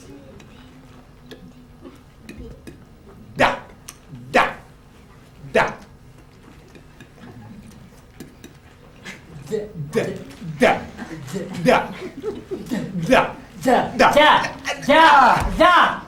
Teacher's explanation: la consonne D, par exemple, se prononce en donnant du bout de la langue sur les dents du haut.